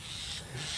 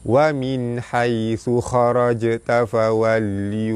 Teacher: Jim mati di tengah kalimah, lantunannya, hukumnya qalqalah sugra, lantunannya tidak kuat